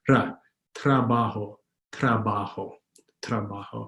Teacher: The R in Tagalog is rolled, but it's not a heavy Spanish roll, ra, but it's called a soft roll or a very quick roll, ra, trabajo, trabajo, trabajo.